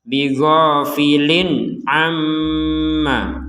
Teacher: Ada tanwin atau kasrotain di sini bertemu dengan ain, maka kita membacanya dengan jelas.